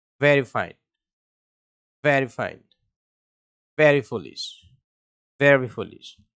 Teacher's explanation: এই ভি এবং এফ এর উচ্চারণ স্থান হচ্ছে উপরের দাঁত প্লাস নিচের ঠোঁট, অর্থাৎ উপরের দাঁত নিচের ঠোঁটকে আলতো করে ছুঁয়ে দিবে।